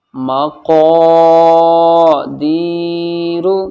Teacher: جب قاف کے ساتھ میں الف آتا ہے تو قاف بھی موٹا پڑھا جاتا ہے اور الف بھی موٹا پڑھا جاتا ہے